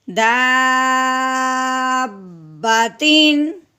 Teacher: داب با زبر با دابا، تا کے نیچے تنوین، آگے حرف ہلکی میں سے ہے، تنوین پہ غنہ نہیں کریں گے بلکہ بغیر غنے کے اظہار کے ساتھ پڑھیں گے